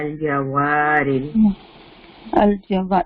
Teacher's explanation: واو جو ہے وہ ہم 2 حرکہ اسٹریچ کر کے پڑھیں گے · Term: الف مدہ